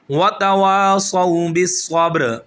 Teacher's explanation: واؤ کو کھینچیں گے، صاد موٹا، واؤ پر پھر لین